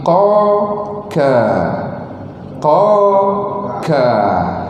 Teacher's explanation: Dia sebut huruf qaf, huruf kaf depan sikit, ka, di depan sedikit saja.